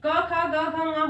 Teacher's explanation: सारे वर्णों को कंठ वर्ण कहते हैं क्योंकि इन्हें कंठ से बोला जाता है।